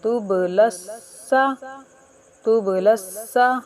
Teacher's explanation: تب، تب نہیں، تب لس سا، سین مشدد حروف ہے، ذرا رک کر پڑھیں گے